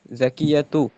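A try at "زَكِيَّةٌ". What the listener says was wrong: জাকিয়াতুন হইব, জাকিয়াতুন। এখানে তানবিন না আসার কোনো কারণ নেই,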